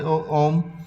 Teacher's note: जैसे 3 गुना लगे बोलने में समय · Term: प्लुत स्वर